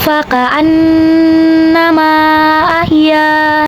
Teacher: Maka huruf mim kita panjangkan boleh 4 sampai 5 harokat. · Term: mad zaiz munfasil